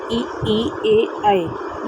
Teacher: हमेशा आगे से ही हम बोल ले रहे हैं तो ये अग्र स्वर है